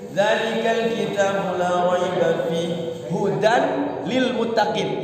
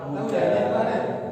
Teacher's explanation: Hudan itu ketika wakaf itu dia harus panjang dua harokat. Hudan. Jangan dibaca hud atau hudi karena ada iyanya ya.